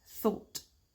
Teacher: Donc le petit th du début est suivi par le OU qui, avec ma prononciation de British, va se prononcer O, assez fermé. Ça peut se prononcer différemment selon d'autres variantes, c'est vous qui voyez après.